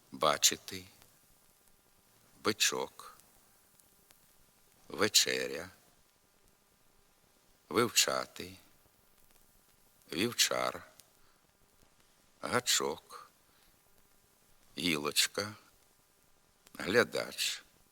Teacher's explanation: вимовляйте за мною твердо звук ч